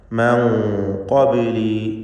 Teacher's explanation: ഇഖ്ഫാ ഹഖീഖി, അവ്യക്തമാക്കി മണിക്കുക. മണിക്കലിലും തഫ്ഖീം വേണം. മൻ ഖബ്ലി, ഖബ്ലി ബാഇൻ്റെ സുക്കൂനിനെ ഖൽഖല സുഗ്റ നൽകി ശബ്ദം ചലിപ്പിക്കുക. · ഖബ്ലി ബാഇൻ്റെ സുക്കൂനിനെ ഖൽഖല സുഗ്റ നൽകി ശബ്ദം ചലിപ്പിക്കുക. മൻ ഖബ്ലി, ഖാഫിന് പൂർണ്ണമായ തഫ്ഖീം കൊടുക്കണം.